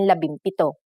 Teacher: If a P follows the NG connector, the NG becomes an M, just like in labimpito.